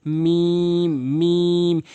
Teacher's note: 2 ঠোঁটের শুকনো অংশ মিলিয়ে মিম মিম